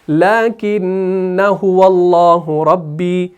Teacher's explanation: تو اس الف کو جب میں نے ہائیڈ کر دیا تو آپ اس نون مشدد کے اوپر زبر کو بھی پڑھیں گے اور آگے هو اللہ سے ملائیں گے